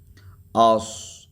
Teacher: سیٹی کے ساتھ سین ادا ہوتا ہے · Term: صفیریہ